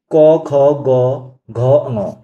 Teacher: तो ये कहां से आवाज आती है इनकी? ये आती है कंठ से।